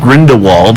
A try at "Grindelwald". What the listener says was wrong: I think they pronounce it with a V that sound though. Grindewald.